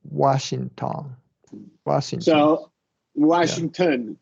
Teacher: In both cases, a true T is used for clarity.